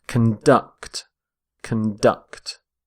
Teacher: Stress on the second syllable.